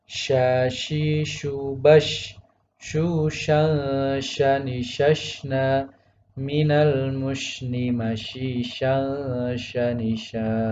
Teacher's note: tidak memonyongkan bibir atau membulatkan bibir ketika membaca shin